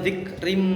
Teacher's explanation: Selanjutnya zikrim, nah ini ada harokat kasroh ten bertemu dengan mim, maka dinamakan idgham bi gunnah, membacanya disertai dengan dengung